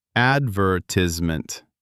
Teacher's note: Americans say advertisement. Four syllables, stress on the third.